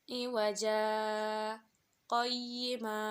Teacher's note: Saktah taklil yaitu diam sejenak sambil menahan nafas, tidak menarik atau mengeluarkan nafas, tetapi tidak wakaf